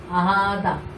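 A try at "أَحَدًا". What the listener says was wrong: হয় নাই, দাল এক আলিফ মাদ করতে হবে তো। হ্যাঁ এক আলিফ দিয়ে পড়ছি, এই জিনিসটা আমাদেরকে মানে আমাদের পড়া এমন হবে যাতে বোঝা যায় যে আমি এক আলিফ মাদ করছি।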